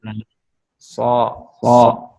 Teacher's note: jadi pangkal lidahnya harus tafhim tebal.